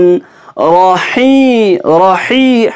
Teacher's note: ہا centre of the throat سے ادا کریں گے